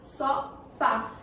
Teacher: Vamos identificar aqui na palavra sofá. Qual é a sílaba mais forte? O Fá, né? Que eu fiz mais força na hora de pronunciar. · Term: sílaba tônica